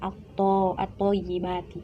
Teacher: Jadi alnya itu tidak terbaca, langsung dimasukkan ke huruf selanjutnya. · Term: alif lam syamsiyah